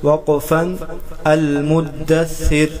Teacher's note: را وقف کے حالات میں باریک پڑھا جائے گا، اگر وقف کریں گے تو را کو باریک پڑھیں گے، اگر وقف نہیں کریں گے وصل کریں گے یعنی ملا کے پڑھیں گے تو پھر را پر پیش ہے تو را قرط پڑھا جائے گا۔